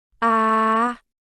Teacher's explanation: it has a high and long tone